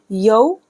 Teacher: वाव साकिन से पहले ज़बर है तो वाव लीन हो रहा है। यौ, या वाव ज़ेर यौ, मीम दाल ज़ेर मिद, दाल या ज़ेर दी, नून साकिन हो जाएगा।